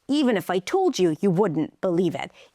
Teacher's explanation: So the stressed words are higher in pitch and a little longer and everything else comes together and becomes smaller and softer.